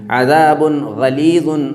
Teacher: یہ تنوین ہے اور غین حروف حلقی میں سے ہے، تو تنوین اور نون ساکن کے بعد حروف حلقی آ گیا اس لیے اس کے نون کو ظاہر کر دیں گے